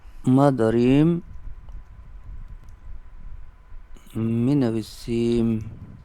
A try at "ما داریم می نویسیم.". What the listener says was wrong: بالکل صحیح.